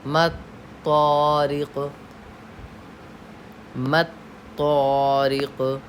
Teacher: तारिक़ में हम क़लक़ला कर रहे हैं।